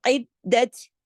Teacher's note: تا کو جماؤ کے ساتھ، عید دت، ہلانا نہیں ہے، جماؤ کے ساتھ